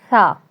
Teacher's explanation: ٹھیک ہے، اور یہ جو زبان کی نوک ہوتی ہے. ٹھیک ہے، اوپر والے سامنے کے جو 2 دانت ہیں. ٹھیک ہے، ان کے اندرونی جو کنارہ ہے اس سے ہلکا سا لگے، ہلکا سا ٹچ ہوگا تو ادا ہو جائے گا تا. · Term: حروف لثویہ